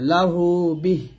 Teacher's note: লাম জবল্লা হাউলটা পেশ হু, মাদের হরফ, বাজের বিহা খারাজের হি, লাহু বিহি। যদি আমরা এখন ওয়াকফ ধরতাম বা থামতাম তাহলে এই হাটা সাকিন হয়ে যাবে